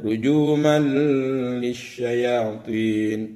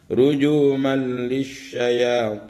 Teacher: Tidak boleh dibaca rujuman lisyayatin. Ini harus langsung dimasukkan tanpa dengung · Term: idgham bila gunnah